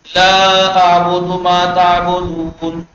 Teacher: ضمہ ہے تو او کی آواز نکالیے گا انڈین پاکستانیوں کی طرح او کی آواز مت نکالے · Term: عربی لہجہ